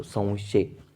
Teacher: अनुस्वाराचा उच्चार कसा? व युक्त होतो.